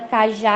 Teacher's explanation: as oxítonas acentuadas, a sílaba tônica é a última